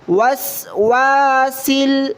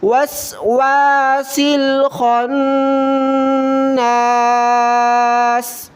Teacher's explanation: سین کو لام کے ساتھ ملایا، اس کے بعد خا کو نون کے ساتھ ملاتے ہوئے غنہ کیا